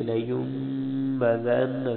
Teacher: زال نرمی والی، نون پہ غنہ ہوگا